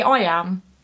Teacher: am is the stress syllable so it's an I am so an I am is an unstressed syllable followed by a stressed syllable